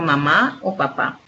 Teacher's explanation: continuar tenemos también el fonema consonántico bill labial en el cual los órganos que intervienen en la producción del sonido son los dos labios